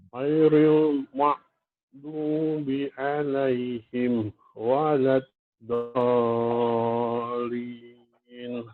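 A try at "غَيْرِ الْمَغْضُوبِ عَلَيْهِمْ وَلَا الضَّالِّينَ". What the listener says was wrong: Di perbaikan yang satu ini adalah pada ghain ya, pada ghairil maghdu. Jangan membacanya ghairil maghdu, tapi ghairil maghdu. Dia ada pertemuan mulut itu tidak sampai rapat. Bukan maghdu tapi maghdu.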